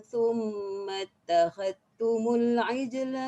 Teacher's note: idghamkan dal dalam ta pada kalimah ittakhadhtum